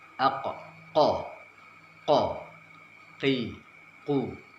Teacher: Seperti huruf q, tidak boleh disertai keluarnya nafas. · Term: huruf qaf